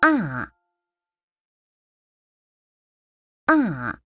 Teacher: That is the sound for the fourth tone. It starts high and drops all the way down.